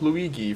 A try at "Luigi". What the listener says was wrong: I think Luigi has a soft G in it.